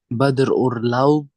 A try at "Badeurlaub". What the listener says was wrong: Nah, Bade. Jadi bukan Bader. Bade Urlaub. Ini kan nggak ada R-nya.